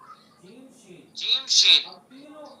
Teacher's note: जबान का बीच और उसके मुकाबिल ऊपर का ताल्लु।